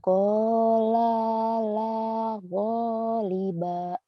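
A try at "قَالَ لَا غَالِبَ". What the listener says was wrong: qala la, nekannya kurang nih. Qala la ghaliba. Qala la ghaliba.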